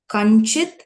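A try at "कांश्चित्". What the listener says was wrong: kamschit ka im ish chit look at the nakara rule you have to add a anuswara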